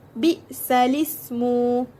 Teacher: naqal ni bermaksud memindahkan baris pada huruf hamzah kepada huruf lam sukun